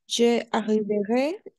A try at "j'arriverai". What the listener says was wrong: Alors, j'arriverai. C'est en un solo golpe de voz, n'est-ce pas? Je arriverai, non, parce qu'il y a deux voyelles ensemble, donc on va faire la liaison. J'arriverai. En un solo, como una sola palabra, el trato.